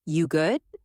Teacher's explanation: Let your voice fall slightly to sound warm and caring